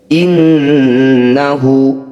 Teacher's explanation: nun bertasydid, disebut bacaan gunnah musyaddadah, bunyi nun dengungkan 2 harokat. Innahu, ada hu atau hi yang dibaca panjang, disebut bacaan matsilah, namanya matsilah qasiroh.